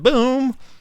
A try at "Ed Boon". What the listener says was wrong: Ed Boon. Not boom, but boon.